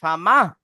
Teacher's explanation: আপনার এই মায়ের সাথে হাটাকে এমন ভাবে বলতে হবে যেন আপনি হাকে সাকিন করে মায়ের সাথে পড়ছেন